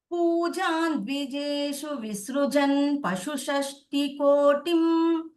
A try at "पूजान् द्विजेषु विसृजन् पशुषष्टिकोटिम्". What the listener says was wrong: Kotin, not Mahapranal.